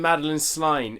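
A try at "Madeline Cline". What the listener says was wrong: Oh, Madeline Klein. You said Sline, yeah.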